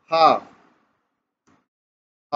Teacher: ह क्या है? सघोष ध्वनि है